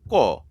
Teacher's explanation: ক বলার সময় কিন্তু ক প্লাস অ এই স্বরধ্বনিটা লাগতেছে